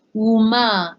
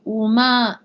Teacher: Either the wa sound with the vowel, in this case, again, the wu, right? Or just u, as if there was no wa involved. So both pronunciations are acceptable.